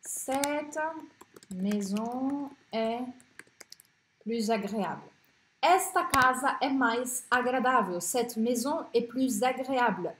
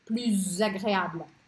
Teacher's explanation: Junto o S do plus com o A do agréable. Só que aqui o som é de Z, tá? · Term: liaison